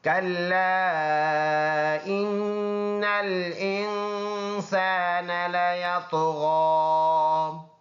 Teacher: یہ نون مشدد ہے تو اس میں ایک الف کے بقدر غنہ ہوگا اور حمزہ اور نون کو ملا کر پھر ناک میں آواز دے کے جائیں گے.